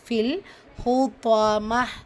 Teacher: ஹா லைட்டா ஓதணும் தா ஹெவியா ஓதணும் · கண்டிப்பா குன்னா செய்யணும் கூடவே நூன் முஷதா இருக்கு அதுக்கான குன்னாவும் செஞ்சு ஓதணும் ஃபில் லாம் சுகூன் இருக்கா சோ இணைக்கிறோம்